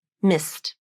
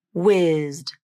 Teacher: the I vowel in mist is shorter in duration because it comes before the St cluster and the I vowel in the word whizzed is longer in duration because it comes before the ZD cluster